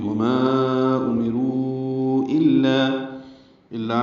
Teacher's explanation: الا ملا الف مدہ ہے، دو حرکات لمبا ہے